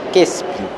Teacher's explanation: Aquí la I junto a la Q desciende a la E. Pueden observarlo.